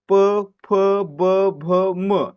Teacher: ज्यांचा उच्चार करताना आपल्या ओठांची हालचाल होते आणि आपले ओठ एकमेकांना चिकडतात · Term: औष्ठय वर्ण, औष्ठ्य वर्ण